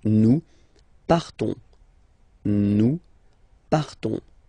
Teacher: classic ending ONS, you don't pronounce the S, you just have this on sound nasal. Nous partons, nous partons, okay?